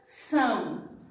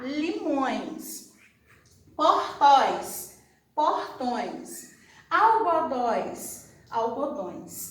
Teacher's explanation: ele sai lógico pela boca mas está querendo sair um sonzinho pelo nariz